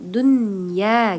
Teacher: Karena ada nun mati bertemu dengan huruf ya, maka bacanya tidak dengung.